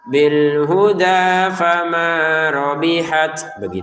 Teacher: Bil huda 2 harokat, fama 2 harokat, rabihat huruf taknya kita keluarin nafas dikit